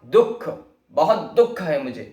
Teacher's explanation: दुख में ह की ध्वनि बीच में सुनाई दे रही है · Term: विसर्ग